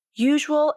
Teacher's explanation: they start with the ya consonant then the lips round for the oo vowel